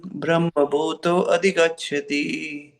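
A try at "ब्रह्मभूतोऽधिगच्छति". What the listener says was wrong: Brahma bhuto dhigacchati. It is not adhigacchati. It is Brahma bhuto dhigacchati.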